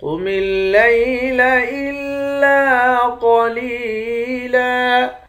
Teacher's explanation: قاف موٹا حروف میں سے ہے، قاف کو موٹا پڑھیں گے، حمزے کو لام کے ساتھ ملا کر لام کو سختی کے ساتھ جمع کر پڑھیں گے۔